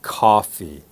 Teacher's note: standard American and Canadian English would be Coffee the O has an ah sound